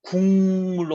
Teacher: 국과 물이 만나면 기역 소리가 콧소리로 바뀌는데 뭘로 바뀌냐면 이응 소리로 바뀌어요. 국, 물 할 때 국물로 바뀌어요.